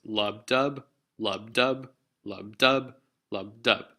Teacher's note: it's not stressed or it's slack on that first beat and then it's stressed on that second beat